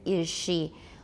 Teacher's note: palatalization is said to occur when the alveolar fricative z in is becomes a palatal alveolar fricative as in is she